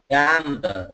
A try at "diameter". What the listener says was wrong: Diameter. Ok, như ở MT ấy, nhưng mà diameter. Ok, nó rơi thế. Diameter. Đờ, not tờ. Đờ. Diameter.